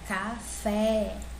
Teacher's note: eu sei que o fé é a sílaba mais forte né ou seja últimas ele é mais forte é uma oxítona